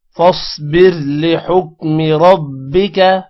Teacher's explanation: فاصبر صاد موٹا ہوگا، را موٹا نہیں ہوگا کیونکہ را سے پہلے زیر ہے، زیر کی وجہ سے را موٹا نہیں ہوگا